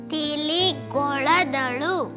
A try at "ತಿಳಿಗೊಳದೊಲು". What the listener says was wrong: ಹಾಗಲ್ಲಮ್ಮ, ತಿಳಿಗೊಳದೋಲು. ಈ ಲ ಅನ್ನೋ ಅಕ್ಷರಕ್ಕೆ ಳ ಅನ್ನೋದು, ಶ ಅನ್ನೋ ಅಕ್ಷರಕ್ಕೆ ಸ ಅಂತ ಉಚ್ಚಾರ ಮಾಡೋದು ತಪ್ಪು.